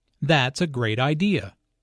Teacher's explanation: notice the emphasis on great